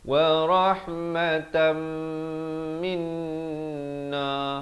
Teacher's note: Wa rahmatan terus masuk beserta dengung daripada tan rahmatan jadi wa rahmatam